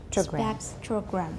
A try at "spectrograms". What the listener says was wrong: You're still saying spectrograms. It's short, and you hardly open your mouth.